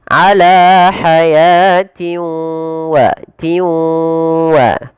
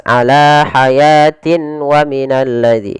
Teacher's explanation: Nah, idgham di sini idghamnya idgham naqis, tidak idgham idghamnya idgham naqis betul, tidak idgham kamil, masih menyisakan sedikit huruf nunnya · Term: idgham bi gunnah